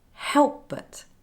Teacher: The p is lost and it becomes help but. This happens here because both sounds are articulated in the same place on the lips, p and b. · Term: assimilation